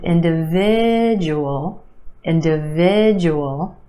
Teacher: Five syllables in this word, emphasis on the third syllable, the eh sound